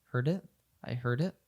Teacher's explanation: we have the D from heard connect to it